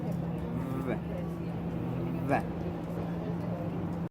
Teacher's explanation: The place of articulation for these sounds is labiodental because you use the lower lips and the upper teeth. The manner of articulation for these sounds is fricative.